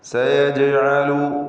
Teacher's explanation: ജീമിന് സുക്കൂൻ, ഖൽഖല സുഗ്റ നൽകിയ ശബ്ദം ഹറക്കത്ത് പോലെ ചലിപ്പിക്കണം